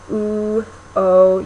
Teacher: in that box U and O are um back rounded vowels they're rounded which means that the lips are actually sort of pursed when you make this vowel